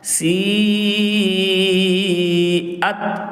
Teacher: مد متصل کو 1 سے 2 الف کی مقدار کھینچ کر پڑھیں گے۔